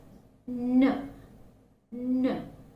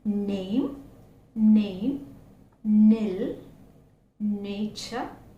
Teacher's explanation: it is called alveolar nasal because in order to produce these the sound the tip of the tongue is making a very close and firm contact with the teeth ridge and is literally blocking the air stream and therefore the air